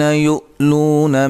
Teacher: یو حمزہ کو جھٹکے سے ادا کریں گے